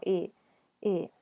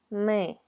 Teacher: Es una I que se pronuncia muy profundo en la garganta. Es casi como una E. Entonces preparen su boca para pronunciar la E, pero digan I.